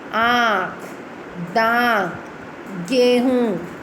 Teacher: अनुनासिक. इसे मुख और नाक से बोला जाता है.